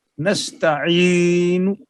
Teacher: موقوف علیہ پر رکنے کے بعد ہونٹوں کو گول کر کے ضمہ کا اشارہ دیتے ہیں. یعنی یہ بتایا جاتا ہے کہ میں یہاں ٹھہر گیا ہوں، میں نے ساکن تو کر دیا ہے لیکن یہاں پر پیش تھی. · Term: وقف بالاشمام